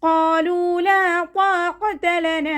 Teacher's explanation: ഖാഫ് ഇസ്തിഅലാൻ്റെ letter ആയതുകൊണ്ട് നാവിൻ്റെ back മുകളിലേക്ക് പൊക്കിയിട്ട് തഫീം ചെയ്യുക കേട്ടോ. ഖാ എന്നുള്ള സൗണ്ട് ക്ലിയർ ആക്കാനും ശ്രദ്ധിക്കുക.